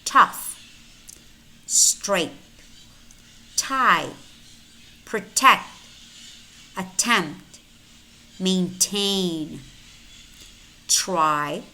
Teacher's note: Remember, T is a voiceless alveolar stop,